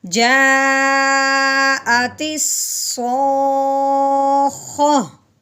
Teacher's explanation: اگر گول تا ہو تو تا کو ہٹا دیتے ہیں، پیچھے ہا کی آواز نکالتے ہیں وقف کی صورت میں۔